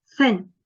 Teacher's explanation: That is a voiceless sound. It is fricative, and it is also dental, which means we utilize both of our teeth to articulate this sound.